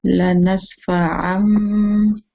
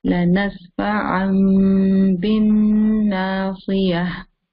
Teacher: We change the tanween into Meen sound.